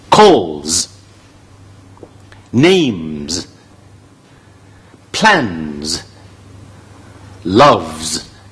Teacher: call後邊加s咧，嗰個s咧就唔係普通嘅s，係z音，係個震動z音嚟嘅